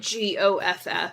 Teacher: I just usually don't say the L in what would be those L's that are right before consonants.